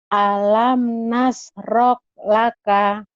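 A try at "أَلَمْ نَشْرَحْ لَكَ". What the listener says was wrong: Nah, itu jawabannya keluar nasroh. Nasroh. Alam nasroh laka. Shinnya hutang ya Bu ya. Alam nashrah laka.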